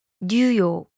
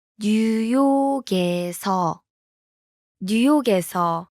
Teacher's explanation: The last consonant in 뉴욕, blends with the vowel in. 에서.